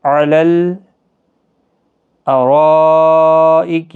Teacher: ان الابرار لفی نعیم علی الارائک ینظرون، علی الارائک، یہاں پر مد متصل ہے، را پر پڑا جائے گا، 4 الف کی مقدار کے برابر کھینچ کر پڑھیں گے مد متصل کو